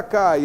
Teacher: Eu tenho aqui um ditongo decrescente, né? Na palavra cai eu tenho vogal mais semivogal, ditongo decrescente.